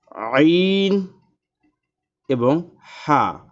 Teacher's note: দুই নাম্বার মাখরাজ হলকের মধ্যখান হইতে উচ্চারিত হয় আইন এবং হা